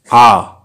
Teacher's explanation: আ নিম্ন, কেন্দ্রীয়, বিবৃত।